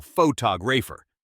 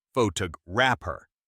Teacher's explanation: A lot of learners will make the mistake of stressing the wrong syllable. We stress the second syllable · We stress the second syllable photographer, not photographer.